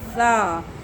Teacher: زبان کی نوک کو اوپر والے دانتوں کی جڑ سے لگا کے سا ادا ہوتا ہے، اس میں سیٹی نہیں ہوتی